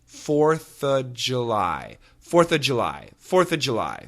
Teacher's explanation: if the next word begins with a consonant, we can cancel the V, the of the VV sound.